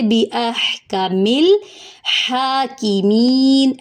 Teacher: اب ہم پڑھیں گے الیس اللہ بِأَحْكَمِ، ہا میں سانس جاری کریں گے، کاف اور میم کی حرکت لمبی نہیں ہوگی، میم کی زیر کو لام سے ملائیں گے، بِأَحْكَمِ الْحَاكِمِينَ، ہا کھڑا زبر ہے، ایک الف کے برابر لمبا کریں گے، ہا کی مین، کاف کی زیر کو لمبا نہیں کریں گے، می پہ جائے مدہ ہے، ایک الف کے برابر لمبا کریں گے، نون کے اوپر جو زبر تھی وہ وقف کی صورت میں جزم سے بدل جائے گی۔